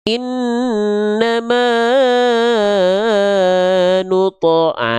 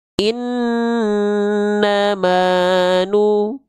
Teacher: nadanya flat tapi kadarnya tetap sama dengan dua kali ayun atau dua harakat